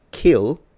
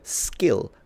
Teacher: not like the word kill because that one is aspirated but like the word skill which has the same k sound but without aspiration